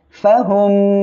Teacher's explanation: ফা জবর ফা, হামিম পেশ হুম। মিম সাকিনের পরে মিম আসছে, আমরা এখানে গুন্নার সাথে মিলিয়ে পড়ব। মিম সাকিনের পরে মিম সাকিনে ইদগামে শাফাউইয়ার অক্ষরে একটি মিম, যখনই আসবে গুন্নার সাথে মিলিয়ে পড়বেন।